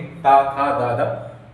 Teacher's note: ऐसा लग रहा है जीभ जो दांतों में टच हो रही है